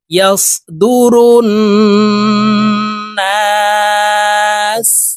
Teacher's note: ইয়াস দুরুন নুন আলিফ জবর না সিন পেশ সু নাসু। সিনকে ওয়াকফের ক্ষেত্রে সাকিন করে ফেলবো, এইভাবে পড়তে হবে ইয়াস দুরুন নাস ইয়াউমাইযি ইয়াসদুরুন নাস।